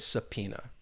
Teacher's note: with the the pronunciation subpoena you're not going to hear that b sound